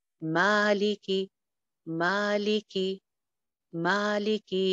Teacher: اب دیکھیے ایک الف لمبا, لی اور کی سنگل حرکتیں ہیں, صرف زیر ہے, تو لہٰذا ما کے مقابلے میں لی اور کی حرکت آدھی ہے